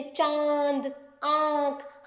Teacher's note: इनका उच्चारण करते समय वायु नाक और मुख दोनों से बाहर निकलती है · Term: चंद्र बिंदु